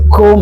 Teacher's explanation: jadi kap itu dari pangkal lidah ya.